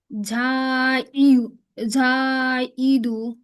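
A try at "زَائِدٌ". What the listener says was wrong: আপু ঝায়ের উচ্চারণ তো হলো না। ঝাইদু।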